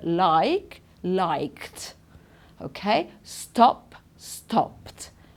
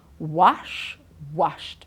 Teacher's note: if the regular verb ends with an unvoiced sound okay the ed sound will be a t